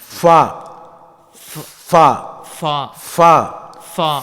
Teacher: இந்த ஃபா என்பது மேல் பல்லின் ஓரம் கீழ் உதட்டின் ஈரமான பகுதியில் இணைந்து காற்றை வெளிப்படுத்தும் போது உண்டாகும்.